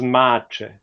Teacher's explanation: this C at the end was palatalized, and then it was pronounced as ch